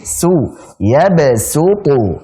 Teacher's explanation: Su tipis, pakai sin. Su, yabsutu, baru ta-nya tebal.